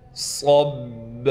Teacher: صب، صاد کو با سے ملائیں گے، صاد میں سیٹی بھی نکالیں گے اور صاد کو موٹا بھی کریں گے۔ با پر تشدید ہونے کی وجہ سے ٹھہراؤ بھی کیا جائے گا۔